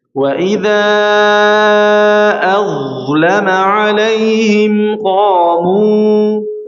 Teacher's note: alaihim dha, kembali ke huruf dha lagi, dha dialirkan dengan sempurna, ya. Huruf dha ketika sukun atau tasydid maka hukumnya dia rakhawah atau mengalirnya aliran suara, ya, dengan sempurna, ya, mengalirnya aliran suara dengan sempurna.